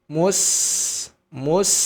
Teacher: sini huruf sebelumnya adalah huruf mu jangan langsung mengucapkan huruf Sin karena huruf Sin harus berbunyi tipis · huruf sin tipis, huruf shod tebal